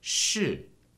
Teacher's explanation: That's 是 in fourth tone, so it goes down. 是 and ends with 的, a neutral tone, so don't stress it.